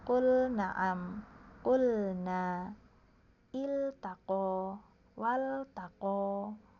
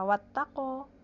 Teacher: jadi lam sukun ketemu nun, di situ bacanya tadi jelas, disuruh jelas.